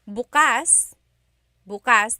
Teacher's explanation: context or depending on the pronunciation if you say buas buas the emphasis is on the second syllable that means open if you say buas buas emphasis is on the first syllable · emphasis is on the first syllable that means tomorrow